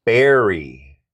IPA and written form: ˈbɛr.i (berry)